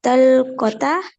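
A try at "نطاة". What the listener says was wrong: कलकत्ता नहीं है, ये नता है, नून से है। हाँ यूं समझ लें ऐसे, नता ये है।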